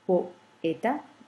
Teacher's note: les deux voyelles ne font pas partie de la même syllabe, sinon qu'on a deux syllabes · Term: hiatus